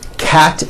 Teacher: cat ends with an unvoiced t